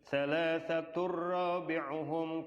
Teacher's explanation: Tanwin ketemu ra, dimasukkan tanpa dengung ya.